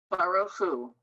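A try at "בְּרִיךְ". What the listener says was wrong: Look at the word. It's the same root, but it's a different vowel. What's the vowel? It's one dot.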